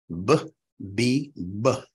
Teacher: They involve your lips. B, B, B. The two lips have to come together. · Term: labials